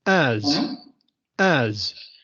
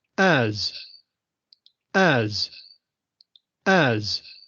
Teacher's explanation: hay una ligera vibración al final